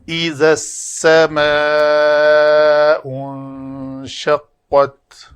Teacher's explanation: ذال نوک لسان دونوں دانتوں کے درمیان نظر آئے سامنے والے کو، تو ذال کی ادائیگی پرفیکٹ ہوگی۔ اگر بند دانتوں کے اندر رکھ کر زا کو ادا کیا جائے گا تو ذال کو ادا کیا جائے وہ زا بن جائے گی، را زا، وہ غلطی ہوگی۔